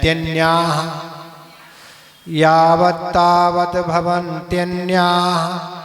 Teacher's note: दीर्घ और विसर्ग दोनों है, तेन्या इसलिए खींचना है।